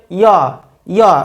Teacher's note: এই অন্তঃস্থ জ পুরোপুরি ব্যঞ্জন বর্ণরূপে উচ্চারিত হবে না, আবার স্বরবর্ণের মতো উচ্চারিত হবে না, এর মাঝামাঝি অবস্থানে উচ্চারিত হবে। সেজন্য এই জ বর্গীয় জ এর মতো উচ্চারিত হবে না, এই জয়ের সঠিক উচ্চারণ হবে ইয় রূপে, ইয়।